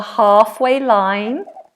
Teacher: although it has an L, it's silent, so we don't say half, it's halfway line.